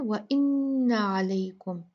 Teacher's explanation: नून मुशद्ददा है, यहाँ पर आपने अच्छे से गुन्ना करना है। अलई लई लीन है, इसको आपने लई बहुत अच्छे से नर्म सॉफ्ट तरीके से पढ़ना है।